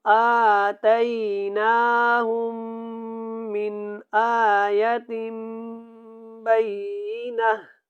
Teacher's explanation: یہاں پہ حمزہ کے اوپر کھڑی زبر ہے، اس کو ہم نے لمبا کرنا ہے۔ اس نون کے اوپر بھی کھڑی زبر ہے، اس کو بھی تھوڑا لمبا کریں۔